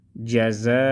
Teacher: جیم زبر جا، زا الف مد زبر زا، حمزہ دو زبر ان، جزاء۔ ادھر ہم مد کو 4 الف کے برابر پڑھیں گے